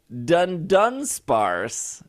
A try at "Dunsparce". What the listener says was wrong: People need to pronounce this correctly. Everybody's been saying Dunsparce. There's no first N. Dunsparce. Dunsparce.